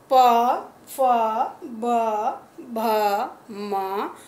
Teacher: प वर्ग का उच्चारण करते समय हमारे होंठ आपस में मिलते हैं और उससे हमको क्या पता चलता है कि प वर्ग का उच्चारण होठों की सहायता से किया जाता है।